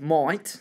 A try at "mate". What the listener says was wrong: Mate, yeah, it is. You've maybe quite got your pronunciation of the A part not quite right. Let's say it out of your nose. Mate.